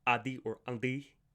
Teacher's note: sounds like nt or nd become either nd or just d in modern Greek